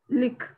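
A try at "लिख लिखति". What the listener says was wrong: Likha, likhati. Lik ऐसे भी बोल सकते हैं, but let us say lik, likhati ऐसे भी बोल सकते हैं, but likha, likhati. Because consonant independently we cannot pronounce properly. That is why likha, likha, likhati.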